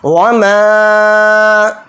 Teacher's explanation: یہ جو اوپر ہے مد منفصل ہے، اس کو 3 الف کی مقدار میم الف کے ساتھ کھینچ کر پڑھیں گے۔